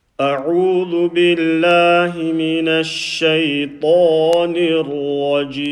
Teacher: Notice how I'm saying letter Ain, stretching the waw madda, and the letter Ta, pronouncing it full mouth, and also doing letter Ra. · The ain sound has to be from the middle of the throat.